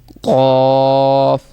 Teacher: اس کو موٹا پڑھنا ہے اور تالو کے نرم حصے سے یہ آواز نکلنی چاہیے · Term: کینچی والا قاف